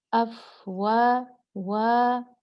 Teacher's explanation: वाव पे फ़तहा था, अलिफ आ गया तो हमने इसको 2 हरकत खींच दिया